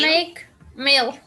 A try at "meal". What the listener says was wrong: Meal. Meal. Yeah, meal, because sounded like mall. okay, so it should be meal. Okay, meal.